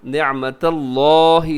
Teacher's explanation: اسے آپ موٹا پڑھیے گا کیونکہ اس سے پہلے تا کے اوپر زبر ہے